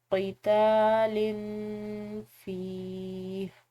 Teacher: یہاں پر لام کی تنوین ہے، اس کے بعد فا حروف اخفا میں سے ہے تو یہاں پر ہم نے اس کو مخفی کر کے پڑھنا ہے، اخفا کے ساتھ پڑھنا ہے۔